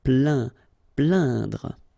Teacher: when you combine this A-I-N, you will get the sound un. So really, this nasal sound in your nose.